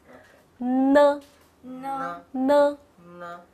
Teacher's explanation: So you can feel the sound seems like from your nostril, right? Your nose.